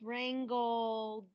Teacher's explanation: Well, wrangle, if you hear at the end of that word wrangle, it is voiced. You can feel it in your throat. You touch your throat.